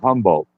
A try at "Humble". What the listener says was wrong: yeah, so Humble, Humble. No T, no D. Humble, like, your personality, you're a very humble person.